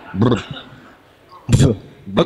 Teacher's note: Trill with your lips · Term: bilabial trill